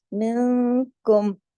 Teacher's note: نون ساکن آواز تھوڑی اخفا میں ناک میں جاتی، تھوڑی باہر رہتی ہے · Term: اخفا حقیقی